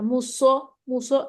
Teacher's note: سو موٹا ہوگا، زبان کا پچھلا حصہ اوپر اٹھ جائے گا